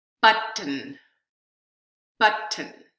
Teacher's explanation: you've got this very quick transition between the tea and the M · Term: syllabification